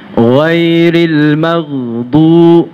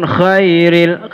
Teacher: Ya, ghainnya hurufnya lunak sifatnya. Lunak. Lebih lembut daripada kha. Jadi tinggal dibedakan, jangan sampai disamakan.